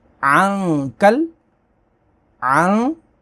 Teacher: نون ساکن کے بعد کاف ہے، اخفا ہوگا۔